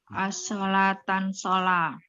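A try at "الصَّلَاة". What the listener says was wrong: As-sholata sholat. Enggak pakai tan Bu. As-sholata.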